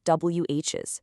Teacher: The speaker dropped both the O vowel and the possessive Z sound, making it sound like WHs. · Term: dropped sound